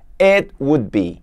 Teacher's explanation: Então você vai pronunciar o T, mas você it, a língua fica no céu da boca e não faz aquele som de t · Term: som do T